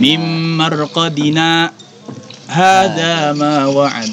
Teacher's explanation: Jadi berhenti sejenak tanpa bernafas. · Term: saktah